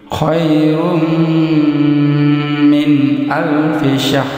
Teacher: Jadi kita perhatikan tanwin bertemu dengan mim. Jadi tanwin atau dhammatain melebur ke huruf mim, bibir rapat sempurna, panjang 2 harakat disertai dengan dengung. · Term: idgham bigunnah